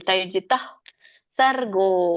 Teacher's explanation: ತೈರ್ಜಿತಃ ಸರ್ಗೋ ಗಕ್ಕೆ ದೊಡ್ಡ ಓಚಿದೆ. ರ ಹೇಳಿ ಆಮೇಲೆ ಓ ಗೋ ಹೇಳ್ಬೇಕು, ಎಳಿಬೇಕು.